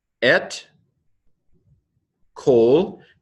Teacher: with all these dashes, the makafs, it loses its accent and goes to a short O. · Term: kamatz katuf